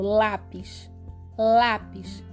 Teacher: paroxítona já é a palavra que tenha penúltima sílaba tônica · É o lá que é o mais forte, não é o pis que é a última.